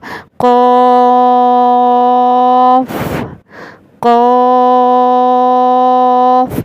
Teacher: زبان کی جڑ جب کوے سے لگے گی، یہ بالکل حلق کے آخر میں جب کوا لٹکا ہوا ہوتا ہے جو، وہ اس سے لگے گی تو قاف ادا ہوگا · اس کو بھی موٹا پڑھا جائے گا کیونکہ یہ حروف مستعلیہ میں سے ہے